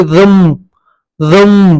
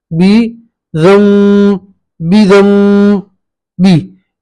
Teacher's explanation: तो नून साकिन को मीम से बदलेंगे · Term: इक्फा के साथ गुन्ना